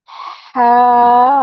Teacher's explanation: जब हम हा अदा करेंगे तो हा से पहले थोड़ा सांस आएगा।